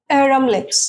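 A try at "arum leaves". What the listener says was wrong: অনেকে আমরা এটাকে অ্যারাম লিপস বলি, অ্যারাম না আসলে এইরম।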